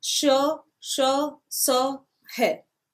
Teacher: इनका उच्चारण घर्षण से उत्पन्न होने वाली ऊष्म वायु से होता है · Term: ऊष्म व्यंजन